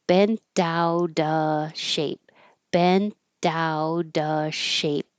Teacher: The T in out changes to a D. And instead of with a V, we just drop the V because you can do that before a consonant.